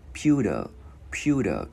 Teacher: Chữ B gắn vào Pew, Pew, Pew. Chữ T biến thành chữ D tiếng Việt nhẹ